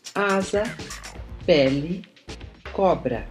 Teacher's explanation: A distinção entre vogais abertas e vogais fechadas só se dá entre vogais tônicas e subtônicas. As vogais, quanto ao timbre, podem ser abertas, A, E, O. A língua encontra-se baixa nesse caso.